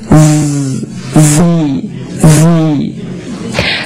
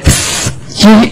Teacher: you should feel your vocal cords vibrating